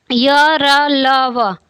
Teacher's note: जीभ, तालु, दंत, दांत और ओठों के परस्पर सटाने से होता है, किंतु कहीं भी पूर्ण स्पर्श नहीं होता।